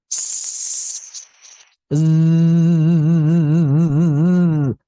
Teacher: Bedanya kalau sin tidak menggetarkan pita suara, pita suara tidak bergetar. Kalau zai pita suara bergetar. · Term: jahr